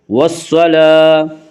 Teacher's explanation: والصلاة، لام کے اوپر کھڑا زبر ہے، کھڑا زبر کو ایک الف کے برابر کھینچ کر پڑھیں گے